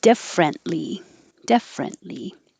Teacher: You don't have to say the T in the middle.